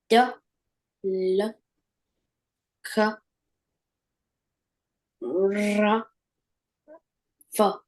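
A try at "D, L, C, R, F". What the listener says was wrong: That's close, but no prize. I don't want to hear any vowel sound. If you say duh, you gave me the small U sound like cup. Duh. So it's not duh, it's what?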